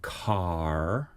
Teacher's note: and then they go into r as the vowel and then they raise their tongue tip up to make the R so they make a retroflex r meaning you pull your tongue back · Well, it's also about when you make the R, because Americans make the R in the final position following a vowel, and we don't. So they go car.